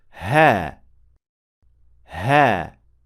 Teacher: air passing through the slightly closed vocal cords produces the proper ha sound · with ha is simply letting air pass through your vocal cords the opening of your vocal cords has to be slightly closed so that this friction can take place and the sound can be produced that little friction sound caused by air passing through is that